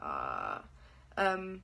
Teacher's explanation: At first I probably put some sound behind it, but it's actually supposed to be an unpitched sound. It's supposed to be an unpitched sound, and so I find that really easy. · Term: Slack